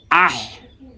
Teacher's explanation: হা জবর আহ ওটা যে কণ্ঠনালীর মাঝখান থেকে উচ্চারণ হবে